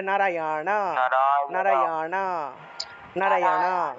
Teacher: জিউভা উল্টিয়ে ন উচ্চারণ